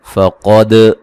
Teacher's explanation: قاف کو موٹا ادا کریں گے، دال پہ قلقلہ کریں گے